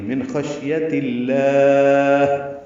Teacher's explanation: شین ساکن پہ ہمس ہے، تفشی ہے